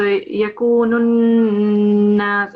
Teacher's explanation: the noon is a mushaddad letter. Here we have shadda, so you have to make it heavier. So yakunun nas, and it's a nasal letter as well. So we have to have a nasal sound as well as a greater emphasis here.